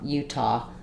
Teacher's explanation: in Utah we're also stressing on T secondary stress · we do actually stress on the U so it does U is longer um but we do have some stress on T so it's